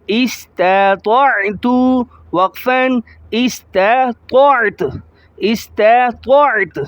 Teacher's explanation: حمزہ سین زیر اس، تا زبر تا، استا، طاعین زبر طاع، استا طاع، تا پیش تو، استطعت، وقفاً استطعت، استطعت، تا کی پیش کو ظاہر نہیں کریں گے اسٹاپ کی حالت میں